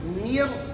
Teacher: نون کے زیر کو بھی ناک میں نہیں پڑیں گے، نون کے زیر کو باریک پڑیں گے، نیچے کی طرف اس کو لے جائیں گے. اور جب را کے ساتھ ملائیں گے تو را کو شروع سے موٹا کر کے آخر تک موٹا پڑیں گے.